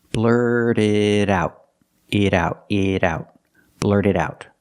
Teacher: But when we link the words, the T in blurt is a fast D because it's after an R and before a vowel. What about the T in it? It's also a fast D because it's between vowels.